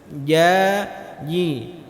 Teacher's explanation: Huruf jim itu tempat keluarnya dari tengah lidah kita. Tengah lidah jumpa dengan langit-langit bagian atas.